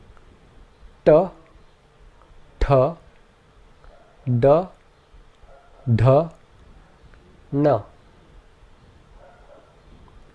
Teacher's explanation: The next group are called cerebrals, where the tongue seals the breath behind it by arching up firmly against the roof of the mouth. The cerebrals have a very hard and sharp sound, and they are all represented by letters with a dot beneath them.